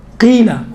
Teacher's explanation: قیلا بالکل باریک تلفظ ہوتا ہے کسر کے صورت میں، زیر کے صورت میں